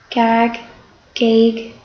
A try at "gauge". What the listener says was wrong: It's gauge, but that's hard to know. That G makes a J sound. So what kind of coding, if we were coding, would you put on top of that G? Yeah, it would tell you that it was.